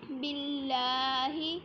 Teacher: اس میں اللہ کے لام کو باریک پڑھا جائے گا باللہ، اور اگر اس کو موٹا پڑھا جائے گا تو اس کی مخارج کی صفات کی غلطی ہوگی۔